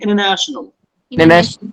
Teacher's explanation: By the native speakers, the letter T is silent, it's making international.